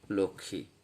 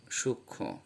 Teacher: যখন তৃতীয় ব্যঞ্জন হিসেবে ম যুক্ত হয় তখন এই মফলার উচ্চারণ হয় না